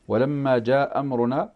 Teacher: له قول واحد في المنفصل أنه بمقدار القصر اللي هو حركتان اثنتان